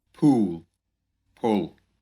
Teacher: В современном акценте оба наших гласных будут задними, если после них идет твердый «л». Его называют темный «л».